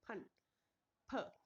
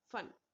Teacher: अब यहाँ पर हम लोग बोलते टाइम इसमें थोड़ा सा अंतर आता है कि बेटा अगर हम लोग बोलते हैं फन, तो फन में हमारा ऊपर वाला होंठ और नीचे वाला होंठ दोनों टच होते हैं, फन, फ। और अगर हम लोगों ने बोला फन, तो फन में जो हमारे होठों की शेप है वो गोलाकार हो जाती है, ठीक है।